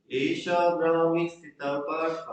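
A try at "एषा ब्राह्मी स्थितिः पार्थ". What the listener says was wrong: Not Sthita, Sthiti. Esha Brahmi Sthitihi Partha.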